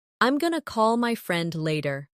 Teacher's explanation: Did you notice going to became gonna? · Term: connected speech